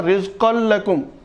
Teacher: رزقن لکم تو اس میں نون بالکل حذف ہو گیا، اڑا دیا گیا، نون کی آواز بالکل اڑا دی گئی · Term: ادغام بلا غنہ